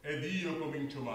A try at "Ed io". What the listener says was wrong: And you're going into the vowel.